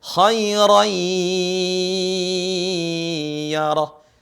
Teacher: Ada tanwin di sini setelahnya, ra tanwin, seharusnya khairon. Tapi dia melebur huruf suara tanwinnya menjadi ya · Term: idgham